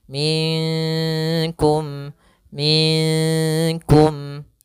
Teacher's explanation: antara keduanya tidak terlu dimasukkan tapi disamarkan minkum minkum nah kemudian di sini kita samarkan nunnya kepada huruf Kaf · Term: bacaan Ikhfa